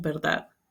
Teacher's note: La oclusiva dental sonora en final de sílaba o palabra se convierte en fricativa. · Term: fricativización implosiva final